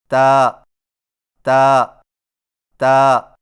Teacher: تا کی ادائیگی میں زبان کی نوک کو ثنایا علیہ کی جڑ سے لگا کر باریک آواز میں پڑھیں، یعنی تا تا تا۔